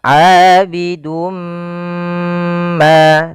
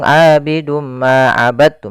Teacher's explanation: Maka pada lafal ini kita cara membacanya adalah kita masukkan tanwinnya kepada huruf mim, kemudian ditahan. Abidum ma, tahan ma, baru dilepas. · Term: idgam bighunah, idgham bi gunnah